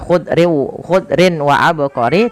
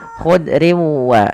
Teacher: Memasukkan tanwin kepada huruf waw sehingga bukan lagi dibaca khudrin wa abqari tapi khudriu sambil ditahan dengan gunnah sepanjang 2 harakat. Maka khudriu baru dilepas. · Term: idgham